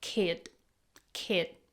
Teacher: In the word kid, she didn't clearly pronounce the D.